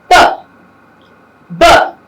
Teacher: They held for some time, maybe a fraction of a second, and then there's a sudden release. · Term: plosives